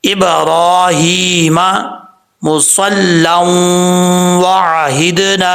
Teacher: لام کے اوپر 2 زبر ہیں، آگے واو ہے، یہاں پہ ادغام یرملون ہوگا، نون تنوین کے بعد واو آ رہا ہے حروف یرملون میں سے، تو یہاں پہ ادغام ہوگا، 1 الف کی مقدار غنہ بھی کیا جائے گا۔